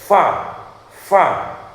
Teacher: ketika mengucapkan fa itu pasti keluar desisan angin. Nah, ini namanya hames. · Misalkan fa, ya, untuk membuktikan bahwa fa itu memang ada anginnya, sifatnya hamas, jenengan bisa menutup mulut, ya, menaruh jari-jari ini di depan mulut. Ketika mengucapkan fa itu pasti akan ada anginnya terasa. Fa, fa. Jangan coba berkali-kali, pasti bisa dirasakan bahwa fa ketika mengucapkan fa itu pasti keluar desisan angin.